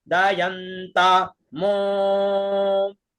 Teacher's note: ता में हम नीचे थे, मो में ऊपर